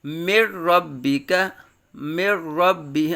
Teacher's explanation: اب یہاں غنہ نہیں ہوگا کیونکہ یہ قاعدہ ہے ادغام کا، را اور لام میں، را اور لام میں بغیر غنہ کے ادغام کریں گے، مر ربک، مر ربی۔ اب یہاں نون کو جو ہے وہ را کے اندر ملایا تو جا رہا ہے لیکن غنہ نہیں کیا جا رہا